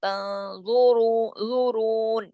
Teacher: زوا کو بھی موٹا، را کو بھی موٹا کیونکہ را پہ پیش ہے